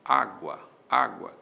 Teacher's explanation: mais forte na segunda sílaba o u ou o a percebe há uma subidinha do U pro a esse U é semivogal o a é vogal aí nós temos um ditongo ditongo é um dos encontros vocálicos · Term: ditongo crescente